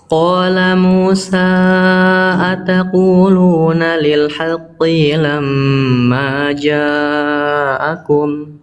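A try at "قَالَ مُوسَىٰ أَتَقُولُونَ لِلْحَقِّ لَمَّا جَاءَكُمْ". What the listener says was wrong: Oke, qafnya kepanjangan. Cukup 1 harokat tadi lagi ya. tadi qafnya kepanjangan. Harusnya 1 harokat.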